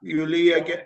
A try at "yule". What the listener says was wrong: It's not Yuli, it's Yule. Yeah, you're still confusing the letter E and letter I. Yes, it's Yule.